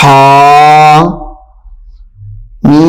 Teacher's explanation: ہا کو تھوڑا اور میم کو 3 الف کے برابر یا 4 الف کے برابر کھینچ کر پڑھنا ہے